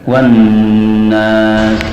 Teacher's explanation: untuk idghamnya lam pada nun, lama panjangnya tidak boleh kurang dari 2 harakat